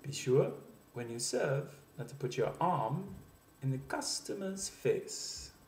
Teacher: You'll see that the sentence builds an inflection throughout the sentence. It starts low and begins to build until it reaches a point of highest inflection at the end of the sentence.